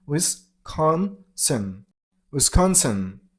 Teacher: Stress on the middle syllable. I mean on con sound.